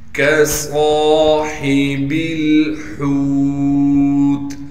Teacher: صاد کو موٹا کر کے پڑھیں گے اور صاد میں سیٹی بھی ادا کریں گے اور صاد کے بعد حروف مدہ میں سے الف آ گیا لہذا صاد کو کھینچیں گے۔